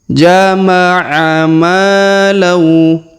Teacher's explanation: Huruf ma kita panjangkan 2 harokat karena terdapat alif di depan huruf ma ya